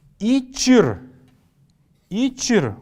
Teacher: Мы здесь после буквы «ч» слышим небольшой такой вот фоновый неясный звук.